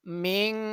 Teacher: nun mati itu harus didengungkan seolah-olah bunyinya ng